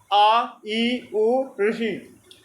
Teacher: इनको बोलने के लिए एक मात्रा काल का समय लगता है। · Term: ह्रस्व स्वर